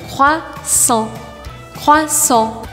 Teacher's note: Eu sempre falo para vocês que os sons nasais em francês que se escrevam EN ou AN, a gente vai imaginar que tem uma batata quente na boca e vai abrir um espaço entre a língua e o céu da boca